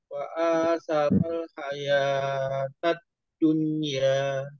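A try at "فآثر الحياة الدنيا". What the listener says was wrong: Jangan panjang-panjang.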